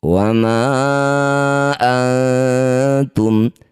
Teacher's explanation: Disebut bacaan namanya ikhfa aqrab. Dengungkan bunyi nun sukun. Ketika dengung lisan kita sudah bersiap bunyikan ta.